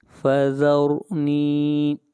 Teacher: را کو یہاں پر موٹا پڑھیں گے، را سے پہلے زبر ہے، نی نون کو کھینچ کر پڑھیں گے ایک الف کے برابر، یہاں پر یا مدہ ہے۔